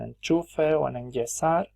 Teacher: Se palataliza cuando va seguida de una postalveolar, que es lo mismo que una prepalatal o una palatal